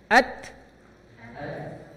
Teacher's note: huruf ta ini memiliki sifat napas ngalir di akhir. At. Nah, ada napas.